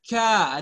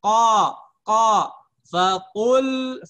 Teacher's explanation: Jadi kalau hamas, ka, ada desis, keluar udara, ka. Kalau qaf, dia jahar. Qa, faqul, bukan fakul.